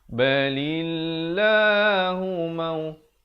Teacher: Lafzul jalalah dibaca nipis 2 harakat.